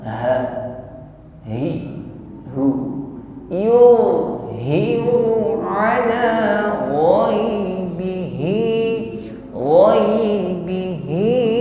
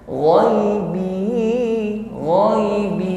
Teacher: Yang pertama yulhi, yulhiu, tidak boleh ngambang yulhiu. Jadi sampaikan pada makhrajnya ha, yaitu aqsal halqi, tenggorokan paling bawah, suaranya gema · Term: huruf h